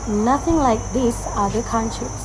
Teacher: stress is placed on nothing, these, and countries with a steady, flat intonation as if stating a fact